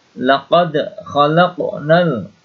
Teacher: laqad dibaca qalqalah sughra. Ada huruf dal sukun di sini.